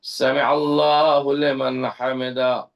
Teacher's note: جب ہم نے عین ادا کیا ہے تو ہم نے عین کو ادا کیا حلق کے وسط سے، بیچ سے